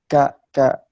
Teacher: memiliki sifat hamas, yaitu ketika dikeluarkan dia ketika diucapkan dia mengeluarkan napas